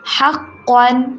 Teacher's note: قن کے اوپر غنہ نہیں کرنا